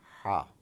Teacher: This H in the system of transliteration has a dot beneath it, which really requires you to have a sound coming from a little deeper side of your throat